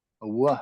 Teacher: Ashkenazis pronounce the V as a w